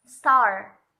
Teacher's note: ntar Paul ada huruf ada seperti ledakannya sedikit atau udaranya namun ketika kita berkata atau kita melafalkan Store itu tidak ada udara yang keluar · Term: unaspirated